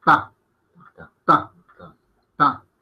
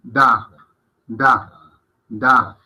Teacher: Vemos como en da las cuerdas vocales vibran más.